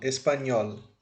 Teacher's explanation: Então, nhol será a nossa sílaba tônica. Esse es e esse pa serão as sílabas átonas, certo?